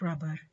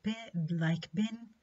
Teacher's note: ولكن في B which is this plosive the vocal cords vibrate producing voice. So we can describe B as voiced bilabial plosive.